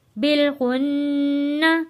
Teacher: نون پہ ہم نے غنہ ادا کیا ہے کیونکہ جو نون تشدید والا ہو ہم نے وہاں غنہ ادا کرنا ہوتا ہے